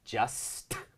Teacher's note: ลืมที่จะเน้นย้ำนะฮะให้ชัดเวอร์นะครับก็คือซควบกล้ำตอนท้ายนะครับ